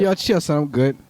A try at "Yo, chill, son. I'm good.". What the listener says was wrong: Yeah, you just cut it off a little bit. Yo, chill, son. I'm good.